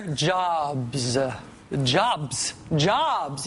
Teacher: Jobs is an easy word to say. It's one syllable, starts with a consonant, ends with a consonant. Ah is an easy vowel sound in the middle. Very few people have trouble with B, with the B there.